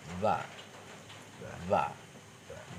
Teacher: Jadi ba ini bibir luar dengan bibir luar ketemu, tidak dalam.